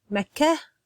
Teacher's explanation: so I tend to have the soft H sound at the end